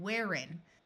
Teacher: in most of the United States this H is silent